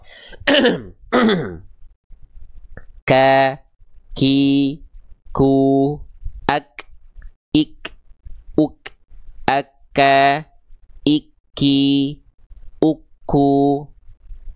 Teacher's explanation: Di sini, titik tumpu dari huruf kaf. Lalu ketika kita lafalkan, dia akan keluar percikan nafas.